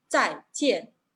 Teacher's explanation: Pero esta palabra se pronuncia en 2 sílabas, ambos en tono cuarto, descendente.